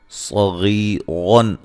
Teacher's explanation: صاد کو موٹا، غین کو موٹا اور غی یا مدہ ہے. غن را کو بھی موٹا ادا کریں گے اور یہاں نون تنوین کا اظہار ہے، غنہ نہیں کریں گے.